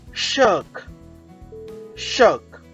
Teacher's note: In shirk, r sound remains silent. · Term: r sound is silent